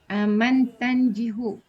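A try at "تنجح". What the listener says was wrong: Najah yang jauh. Najah yang jauh, bukan yang jihu, tapi yang jauh.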